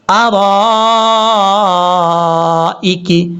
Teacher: را کے آگے الف ہے، یہ الف کے اوپر مد جو ہے یہ مد متصل ہے، اس کو 2.5 الف کے برابر آپ نے لمبا کرنا ہے